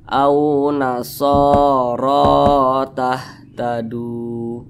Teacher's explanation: Mat tabi'i, panjangnya 2 harakat atau kira-kira 2 ketukan.